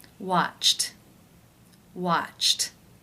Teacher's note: The final sound of the verb in infinitive form is ch. That is an unvoiced consonant sound. Therefore, it is case 1, where the ED is pronounced as the T sound.